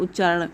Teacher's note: यदि त के बाद यदि च या छ हो तो हलंत त का च हो जाता है। जैसे उत प्लस चारण, यहाँ पे हलंत त का हलंत च में कन्वर्ट हो जा रहा है, तो इस तरह से बन जा रहा है उच्चारण। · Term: त संबंधी नियम